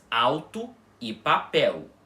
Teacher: E vocês conseguem perceber que nessas duas palavras o L tem som de U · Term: semivogal